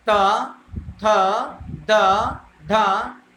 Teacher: ऐसे वर्ण जो जीभ की नोक द्वारा ऊपर के दांतों को स्पर्श करके बोले जाते हैं वह दंत वर्ण कहलाते हैं।